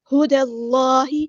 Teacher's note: دال کو ہم نے لام کے ساتھ ملا دینا ہے، حمزۃ الوصل ہمارا ڈراپ ہو جائے گا ، اللہ کا جو لام ہے یہاں پہ موٹا ادا کریں